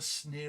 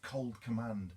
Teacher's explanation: it's got both that sibilance with the sneer that sinister maybe whip like sound and it contrasts with the cold command it contrasts because it's a plosive sound